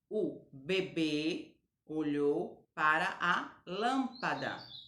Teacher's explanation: então beber e lâmpada o som da vogal está fechado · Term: timbre fechado